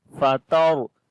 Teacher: Ra we read in heavy sound due to sukun sign on it, and there is fatha on before letter. That's why this ra is heavy.